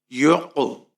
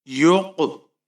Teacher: قلقلہ کرنا ہے، آپ کی آواز لرزتی ہوئی نکلنی چاہیے